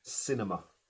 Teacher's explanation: Ahí la segunda y la tercera son schwas.